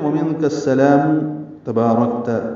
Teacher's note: نون ساکن پہ اخفا ہے، کاف کو سین سے ملانا ہے